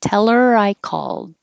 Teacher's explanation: the L from tell connects get rid of the H and now it sounds like teller